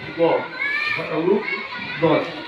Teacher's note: ada di sisi lidah bertemu gusi geraham